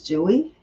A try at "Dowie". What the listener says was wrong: Yeah, Dowie. Yeah, do Dowie. Well, it says the way it's pronounced in Indonesia is Dowie. So it sounds like Dewey to us, but it's Dowie.